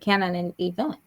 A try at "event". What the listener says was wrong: You're saying the E. You just need to say event.